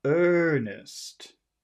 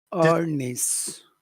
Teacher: It depends on who you're talking to, but it would be better if you made that vowel sound much longer because of the R.